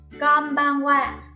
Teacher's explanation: nếu đứng sau in là các phụ âm M, B và P thì mình sẽ đọc in thành M, tức là khép môi lại các bạn nha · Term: âm mũi